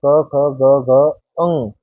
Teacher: जब हम क वर्ग का उच्चारण करेंगे इनका तो हमारी जीवा जो है वो कहां पर लगेगी कहीं भी नहीं लगेगी कंठ से उच्चारण करेंगे